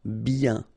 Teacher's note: when you get this combination of I-E-N, you get the sound yen